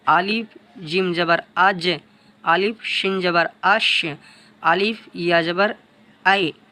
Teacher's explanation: জিহ্বার মধ্যখান তার বরাবর উপরের তালু হতে উচ্চারণ হয় জিম শিন ইয়া।